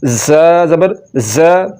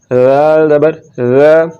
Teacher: ज़ा को पढ़ते हुए सीटी की आवाज़ निकलेगी और ज़ाल को बगैर सीटी के पढ़ना है